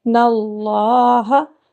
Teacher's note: واو ساکن ہے، ان کو تھوڑا سا لمبا کریں گے، اللہ لفظ اللہ کے لام کو پر موٹا پڑھیں گے